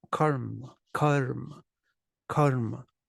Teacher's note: the a stays the short sound but the consonants actually take up more space it's like there's some kind of hesitation karma karma karma [Music]